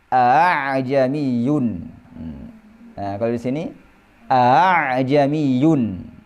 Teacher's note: Bunyi keduanya itu bunyinya antara hamzah dan alif. Nggak boleh dibunyikan hamzah a, nggak boleh a. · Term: hamzah yang ditashil